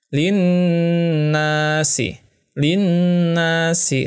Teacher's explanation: nun bertasydid. Ya, bacanya gunnah. Ditahan selama 2 harokah.